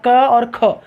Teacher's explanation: जब क बोलेंगे तो हवा का प्रवाह कम है, और जब ख बोलेंगे तो हवा का प्रवाह ज़्यादा है। इसका मतलब ये हुआ कि क अल्पप्राण और ख महाप्राण है।